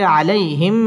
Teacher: জবরের বাম পাশে জজম ওয়ালা ইয়া লিনের হরফ তাড়াতাড়ি পড়তে হবে